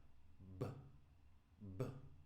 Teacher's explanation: But when I touch my throat, B, B, I do feel that vibration. So this is a blocked or partially blocked sound, but it is a voiced sound. Still a consonant because it's blocked or partially blocked.